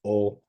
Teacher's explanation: in Korean, it's more of a pure vowel, where it's just O, which to me often ends up sounding like oo